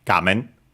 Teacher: gamen actually accent on the first syllable, on ga, gamen. So be careful, because actually it's an exception, because we've seen that most Chinese compounds are actually unaccented.